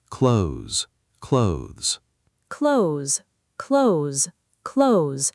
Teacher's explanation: So over time, in fast, natural speech, the TH gets absorbed and mostly disappears, leaving just the Z sound behind